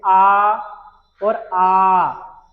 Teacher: तो आवाज हमारी निकलती है कंठ से